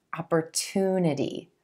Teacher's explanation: I want to draw your attention to the sound at the beginning of the 3rd syllable. It's a t, true T sound.